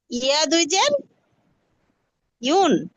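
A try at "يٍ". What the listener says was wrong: না, ইয়া দুই জের ইন। ইয়া দুই পেশ ইউন।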